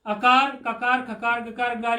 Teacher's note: ये कवर्ग और हकार और विसर्ग ये सब कंठ से बोले जाते हैं